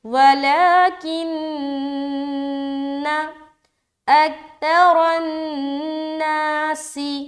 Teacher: لا، ولا، کاف نون زیر کن، نون زبر نا، یہاں پر نون کے اوپر شد ہے تو یہاں بھی نون مشدد کا غنہ کریں گے